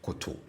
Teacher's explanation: for the stative, it doesn't matter whether it's a single syllable or more than a single syllable. The tone on all the syllables are low. So for the stative form of this same verb, the tone on both syllables are low.